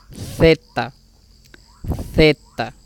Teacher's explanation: Esta palabrita a veces algunos la traducen como la T, pero en realidad esta palabra es la Z, que equivaldría a una pronunciación como una Z española, como poniendo la lengua entre los dientes